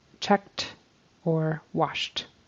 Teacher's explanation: that e d turns into a t for checked you have to say that sound on the end of these